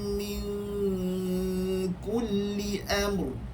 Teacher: Min kasini ikhfa. Ikhfa ni nipis kerana kaf itu istifal.